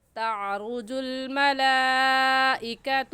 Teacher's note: اس مد کو 4 الف کے برابر کھینچ کر پڑھیں گے، نہ اس سے کم اور نہ ہی اس سے زیادہ۔ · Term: مد متصل